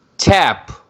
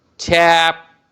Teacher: ch is giving hard sound means aspirated, but p is giving the light and soft sound